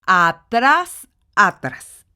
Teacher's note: Vemos que la sílaba tónica se encuentra en tras, que es la última sílaba, y entonces estamos ante una palabra aguda que cumple con la regla porque termina en S.